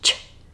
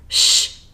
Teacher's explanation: For the /ʧ/ sound, the blade of the tongue is in the same position as for /ʃ/, but with a /ʧ/ sound, you need to block the airflow more.